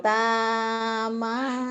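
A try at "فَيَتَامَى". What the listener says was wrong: Titiknya satu. Fa bukan koyatama.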